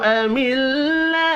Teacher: میم ساکن کے بعد حمزہ ہے, اظہار شفی ہوگا, غنہ نہیں ہوگا. اللہ کا نام زیر کی وجہ سے باریک پڑھا جائے گا